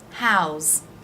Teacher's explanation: the s is pronounced as a z sound